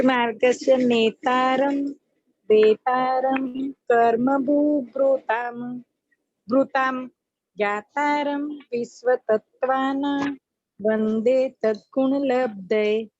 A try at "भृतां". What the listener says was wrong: भृताम बोलना है आपको, भू बोल रहे हैं आप, भ्री बोलना है। बस ये चीज आप थोड़ा और कोशिश करना। भृताम भृताम भृताम भृताम, ये वाला आप भृताम। हाँ, भू नहीं, भू भृताम नहीं, भृताम बोलना है, ये आप